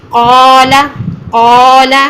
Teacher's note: कोला ना हो आपका, को वाव की साउंड आ रही है, होंठ गोल नहीं होने चाहिए।